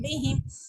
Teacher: با مشدد ہونے کی وجہ سے پریس ہو رہا ہے میم پہ یہاں پہ ہم اخفاء شفی کر رہے ہیں